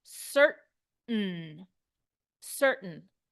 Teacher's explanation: I don't even really say the T I don't say the a or the I I go straight to the N certain certain is how we say it in North American English